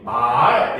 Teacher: 이거는 처음에는 낮았다가 높아지는 소리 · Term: 상성